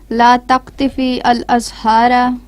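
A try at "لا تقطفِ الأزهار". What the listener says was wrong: نہیں بچے دیکھو، لا تقطف الازہار، فا کے نیچے زیر آیا نا تو اس کو لام کے ساتھ ملانا ہے.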